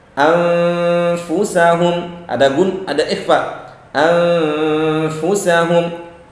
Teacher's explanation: Contohnya ya, anfusahum, ada ikhfa, anfusahum. Nah, itu gunnah, suara yang keluar dari hidung disertai intonasi panjang, itu keluarnya dari khayshum. Kalau kita tutup dia tidak akan keluar.